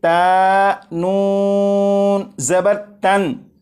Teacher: میں نے نون ساکن پر غنہ نہیں کیا